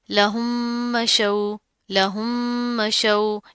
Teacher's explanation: یعنی کہ مدغم کو مدغم فی ہی میں اس ایسے داخل کرنا کہ دونوں ایک ساتھ مشدد ادا ہوں، دونوں ایک ساتھ مشدد ادا ہوں، یعنی کہ ہونٹوں سے ادا ہوں گے، دونوں کو ہم نے ایک کر کے پڑھ دینا ہے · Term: ادغام